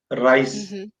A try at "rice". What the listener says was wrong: you're rolling the r when you so the when i mean rolling the r it's the it's just rice right